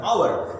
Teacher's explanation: আওয়ার লিখতে গেলে এইচের উচ্চারণটা তখন কাটা যাবে, ও থেকে শুরু হবে উচ্চারণ, আওয়ার, হওয়ার না।